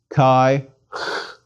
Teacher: the air escapes it's equivalent to the CH in Scottish Loch